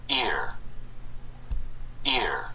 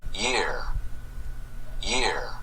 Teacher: ear은 마찬가지로 성문 파열음이 삽입됩니다. 그래서 ear 이런 식으로 발음이 되고, 이거는 year 여기는 성문 파열음이 삽입되지 않는다는 그런 차이가 있습니다